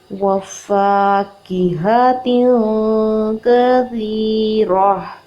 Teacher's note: فا زبر الف فا ہے، اس کو ہم نے 2 حرکت لمبا کرنا ہے